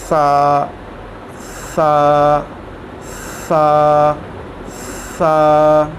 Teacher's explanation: इसके अंदर बिल्कुल सीटी की आवाज़ नहीं आनी चाहिए। अगर इसके अंदर ये आवाज़ आई तो ये गलत हो जाएगा, इसलिए इसके अंदर बिल्कुल भी सीटी की आवाज़ नहीं आनी चाहिए।